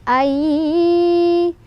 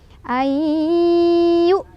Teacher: Illa ay idgham bi gunnah karena ada nun sukun ketemu sama ya. Cara bacanya nun sukunnya langsung masukkan, leburkan ke ya.